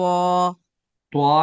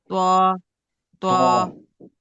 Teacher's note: जबान की जड़ को ऊपर उठाकर मोटी आवाज में पढ़ेंगे त्वा को।